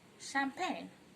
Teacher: make sure that you do not use the sound ch but sh.